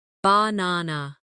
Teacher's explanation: in the word banana, the stress is on the second syllable, banana. If you put the stress in the wrong place, it can sound strange, even if your pronunciation of the letters is correct.